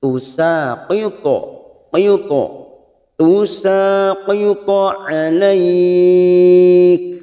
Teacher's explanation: Qalqalat to ini hurufnya tebal, maka pada saat memantulkan posisi bibir kita seperti cemberut